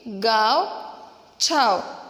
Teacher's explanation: अब ये जो अनुनासिक है इसके उच्चारण स्थान हमारे नाक और गला, इन दोनों से इसका उच्चारण किया जाने की वजह से उसे अनुनासिक कहा जाता है।